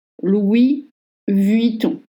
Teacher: And don't voice the N at the end.